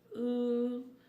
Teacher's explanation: the sound of ooh is back rounded